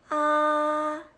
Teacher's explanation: First tone. It's flat and high-pitched.